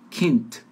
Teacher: A letra D, no final de palavras e antes de consoantes, soa como T de tatu.